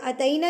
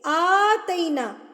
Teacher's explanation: आ एक उंगली खोलने में आपको जितना टाइम लगेगा